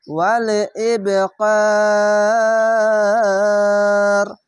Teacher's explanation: কলকলা ধাক্কা মেরে কলকলা হবে এবং নিচে সাউন্ড আসবে